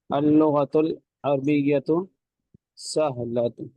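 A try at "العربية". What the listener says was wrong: جی اللغت العربیۃ نہیں، عربیۃ. را پہ زبر پڑھیں گے، اللغت العربیۃ.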